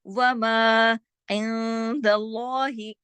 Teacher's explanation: وما عند اللہ، یہاں پہ اخفا حقیقی غنہ کاملہ، لیکن اللہ اس میں جلالہ ہو گیا. یہاں پہ لام کو موٹا پڑھا، کیوں؟ دال کے زبر کی وجہ سے. جب بھی اللہ کا نام آئے اور اس سے پہلے والے حرف پر زبر ہو، لام کو موٹا پڑھا جاتا ہے.